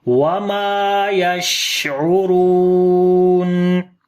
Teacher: تو مکمل طور پر ان صفات کی ادائیگی کرنی ہے، اور را کو موٹا پڑھیں گے، اس کے اوپر پیش ہے، اور واو مدہ ہے، لمبا کریں گے